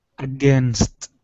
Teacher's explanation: in between the n and the S you're adding an extra vowel you're saying againist okay instead of against it's against okay against